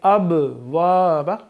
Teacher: اب وابا قلقلہ ہے تو با کی آواز کو لوٹائیں گے